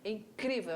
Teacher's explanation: Paroxítona, a sílaba forte é na penúltima, tá? Na palavra incrível, olha lá, a nossa sílaba tônica é a paroxítona.